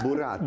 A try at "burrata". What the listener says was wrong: We'll work on your R's. It's okay, you'll get there.